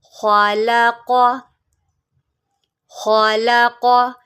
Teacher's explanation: یہاں پر خا اور قاف حروف مستعلیہ میں سے ہے تو ہم نے اس کو جو ہے موٹا کر کے پڑھنا ہے